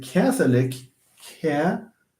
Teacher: Stress falls on the antepenultimate this time. It's because we have lick here.